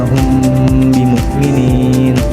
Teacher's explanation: Nah, di situ adalah ikhfa syafawi. Dibacanya didengungkan, ditekankan 3 harokat.